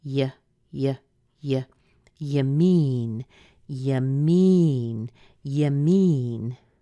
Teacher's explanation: you isn't often stressed you is usually reduced